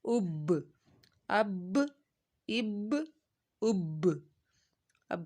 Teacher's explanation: حمزہ با زبر اب، حمزہ با زیر اب، حمزہ با پیش اب، اب، اب، اب، اب با پہ ہم نے قلقلہ کیا، با کو دبو کے ساتھ پڑھا اور دونوں ہونٹوں کے تار حصے سے ادا کیا با کو